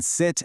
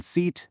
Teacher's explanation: the difference between the short vowel in sit and the long vowel in seat